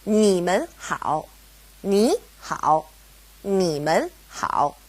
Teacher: because we have mun separating ni and hao, they both go back to being third tone